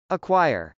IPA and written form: əkwˈaɪɚ (acquire)